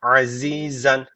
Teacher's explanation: Keskin Z unutmayın Peltek falan değil kesinlikle Keskin Z azizen Zen derken bakın burada ne var tenvin var mutlaka tecvit